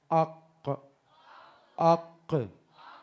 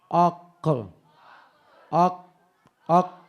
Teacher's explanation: कव्वे से मुत्तसिल, जबान की जड़ और तालू का नरम हिस्सा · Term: काफ